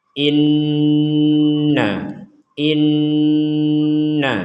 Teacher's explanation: Jadi in dengung dulu baru ke na. · in dengung dulu baru ke na in in jadi inti dari dengung itualahga hidung kita itu berdengung